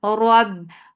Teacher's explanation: Ra is heavy. Whenever ra is with fatha, it is heavy.